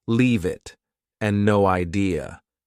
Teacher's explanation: Both sound like they have no spaces between the words.